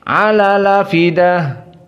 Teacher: fidah karena hamzahnya dihapus, fa-nya langsung kasroh yang tadinya sukun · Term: naql